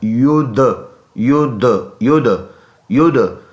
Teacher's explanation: دال میں قلقلہ کریں گے، آواز مڑ کے آئے گی. آواز مڑ کے آنے کو قلقلہ کہتے ہیں، یعنی آواز اپنے مخرج سے اس میں حرکت کرے گا